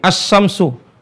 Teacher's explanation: seolah-olah ya seolah-olah lam itu nggak ada jadi cara bacanya seperti ini seolah-olah bacanya seperti ini as syamsuh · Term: lam syamsiah